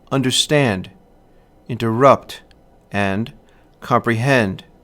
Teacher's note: two unstressed syllables followed by a stressed syllable